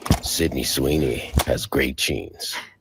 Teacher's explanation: that Valley Girl vocal fry thing. That they are frying eggs in the back of their throat.